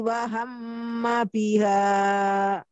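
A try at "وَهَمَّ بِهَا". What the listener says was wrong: Ya, hati-hati, dalam harokatnya jangan kepanjangan. Biha, nah itu kepanjangan.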